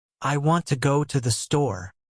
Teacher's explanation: The strong words are want, go and store. The small words I to the are weak and fast. If you try to pronounce every word with equal strength, your sentence will sound flat and unnatural. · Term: stress timed language, stress-timed language